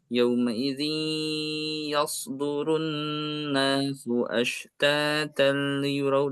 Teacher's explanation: huruf shad ini meskipun dia sukun, dia akan tetap, tebal ya, dia akan tetap tebal. Yauma idin tebal ya.